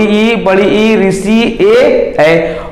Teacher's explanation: अग्र स्वर में ई तो जीभ आगे को गई, बड़ी ई जीभ आगे को निकली, ऋषि ए इनमें जीभ आगे निकल रही है।